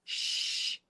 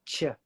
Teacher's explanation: with sh, the tongue is behind the teeth, but not close to the teeth. With chip, you need the tongue closer to the teeth to get the ch. In fact, the tongue can actually be at the top of the palate.